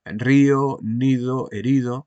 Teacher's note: Río, nido, herido, siempre con la vocal i, que es la más aguda de nuestras 5 vocales, la que se pronuncia en un lugar más alto